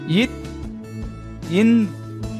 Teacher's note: மேல்வாய் பல்லின் அடியை நாക്കിൻ நுனி பொருந்துவதால் பிறக்கின்றன